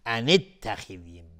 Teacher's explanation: وقتی که وصل میشه دیگه الف وصل یعنی الف حذف میشه، میگیم ان اتخذی، مباشرتا از روی نون میریم روی تای دو نقطه